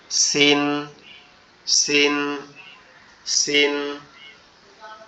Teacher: আমাদের জিহ্বার আগা নিচের দুই দাঁতের আগার সঙ্গে লাগবে। লেগে উচ্চারিত হবে সিন সিন সিন এবং এইখানে যেটা আছে এটা হচ্ছে আমাদের দুই দাঁতের পাটি একসাথে শক্ত করে লেগে থাকবে।